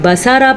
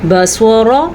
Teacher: بصورا صاد حروف مستعلیہ میں ہے، یعنی اگر آپ اس کو بصارا پڑھتے ہیں تو غلط پڑھتے ہیں، اس کو کیا پڑھنا ہے، بصورا، را بھی پر اور صاد بھی پر